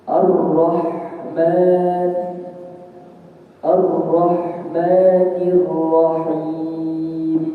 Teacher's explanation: wasatul halqi, ya, atau tenggorokan bagian tengah, yaitu ada huruf ain dan ada huruf ha